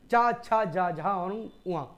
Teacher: तालव्य व्यंजन की हम बात करें तो यहां पे आप देख रहे होंगे वे वर्ण जिन्हें बोलते समय हमारी जीभ जो है वह तालु से टकरा रही है